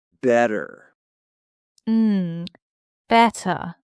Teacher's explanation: That T sound. Yeah, it's that little flap T for us.